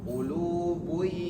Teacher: Qulubuyaw, tahan dulu. Qulubuyaw, tanwinnya tidak dibaca jelas karena idgham dimasukkan. Bi gunnah ditahan. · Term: idgham bi gunnah